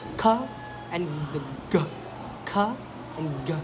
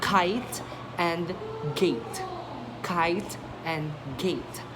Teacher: so velar, back of the tongue against the soft palate